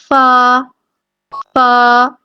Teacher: فا کی ادائیگی میں ہمارے جو اوپر ثنایا الیہ کے جو کنارے ہیں نا دونوں کے، وہ لگتے ہیں نیچے والے ہونٹ کے اندرونی حصے کو، اندرونی جگہ کو، جو اندر والی سائڈ پہ ہونٹ ہے نا ان کو لگیں گے تو فا ادا ہوگا، فا فا اس طرح سے۔